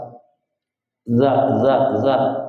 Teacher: za ini dari lisan ujung punggung lidah dan ujung gigi seri atas